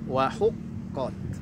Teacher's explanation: Qafnya huruf tebal, ta-nya huruf tipis.